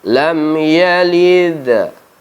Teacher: ketika membaca huruf Qalqalah ini huruf Dal nya condong ke baris atas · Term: Qolqolah Sugro